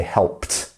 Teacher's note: remember the P it's not making too much of a vibration there